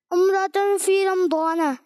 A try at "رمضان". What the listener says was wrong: رمضان نہیں میم پہ زبر ہے. رمضان. زوا ہوتا ہے, زواد ہوتا ہے یا ضاد ہوتا ہے عربی میں؟ ضاد ہوتا ہے نا. رمضان. رمضان یہ اردو میں ہوتا ہے.